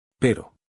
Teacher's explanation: The tongue goes up, taps once, and comes back down. · It is not a D. It is a quick tap of the tongue against the alveolar ridge. One fast touch, and then the tongue drops back down. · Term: single tap, Spanish R